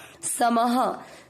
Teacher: विसर्ग को पढ़ेंगे ह